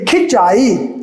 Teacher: जैसे ई के लिए खिंचाई, तो ऐसी कंडीशन में साउंड तो वही रखी, चाई, हमारा साउंड नाक और मुंह दोनों से आ रहा है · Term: चंद्र बिंदु